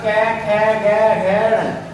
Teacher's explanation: ये जो है हमारे कंठ से निकलते हैं वर्ण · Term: कै वर्ग